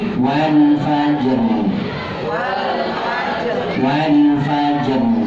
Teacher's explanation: Jinnya qalqalah, rohnya tetap dibaca dengan jelas